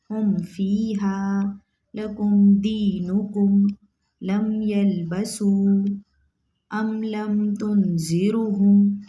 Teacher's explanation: नून साकिन मीम साकिन की आवाज़ को ज़ाहिर करके पढ़ेंगे। क्यों, यहाँ इजहार शफ़ी होगा।